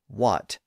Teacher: those words don't really have that initial H sound anymore in most standard dialects